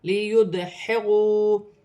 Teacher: دال ساکن ہے، حرف قلقلہ میں سے ہے، قلقلہ کے ساتھ ادا کیا جائے گا۔ واو ساکن سے پہلے پیش ہے واو مدہ بن رہی ہے، ایک الف کی مقدار کھینچ کر پڑھا جائے گا۔